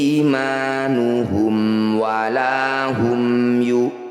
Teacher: Bunyi mim sukunnya baca dengan jelas. Tidak usah dengung, rapatkan bibir dengan sempurna di sini. Imanuhum walahum yu, sama, mim sukun bertemu selain mim dan ba. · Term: izhar syafawi